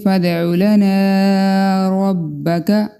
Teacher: را کے اوپر زبر ہے، اس وجہ سے یہ پر پڑا جائے گا